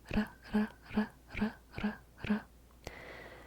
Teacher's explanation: quickly tapping the tongue against the alveolar ridge, the ridge behind the upper teeth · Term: flipped R